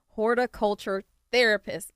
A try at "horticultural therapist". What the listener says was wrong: We lost a syllable.